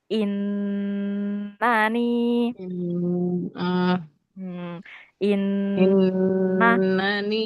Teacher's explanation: nun dan mim yang bertasydid itu dia bacanya harus mendengung lama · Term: ghunah